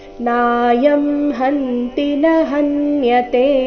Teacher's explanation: ಕೊನೆಯ ಚರಣದಲ್ಲಿ ಎರಡೇ ಎರಡು ಅಕ್ಷರಗಳು ದೀರ್ಘ ಇವೆ ನಾಯಂ ನಲ್ಲಿನ ನಾ ಹನ್ಯತೆ ನಲ್ಲಿನ ಕೊನೆಯತೆ ಮಾತ್ರ ದೀರ್ಘ ಮಿಕ್ಕಿದ ಎಲ್ಲಾ ಅಕ್ಷರಗಳು ಮಧ್ಯದಲ್ಲಿ ಬರುವ ಎಲ್ಲಾ ಅಕ್ಷರಗಳು ರಸ್ವ ಇವೆ ಅದಕ್ಕಾಗಿ ಈ